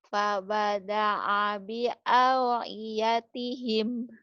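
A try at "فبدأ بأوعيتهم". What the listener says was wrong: Iya, gitu fabada'a, tapi A-nya bukan ke ain ya. Fabada'a fabada'a bi au fabada'a bi au'i baru ain. Fabada'a bi au'iyatihim.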